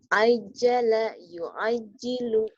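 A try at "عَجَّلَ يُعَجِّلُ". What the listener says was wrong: Ain. Ajala ain.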